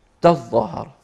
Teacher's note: أما قراءة التشديد على إدغام التاء الثانية في الظاء على أن يصير حرفا واحدا مشددا